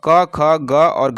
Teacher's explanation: क, ख, ग और घ जो है ये कंठ से निकलने वाली ध्वनि है। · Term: कंठ ध्वनि